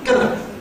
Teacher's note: ‘going to’ is a special case, because that has an extra weak form, [ gənə ].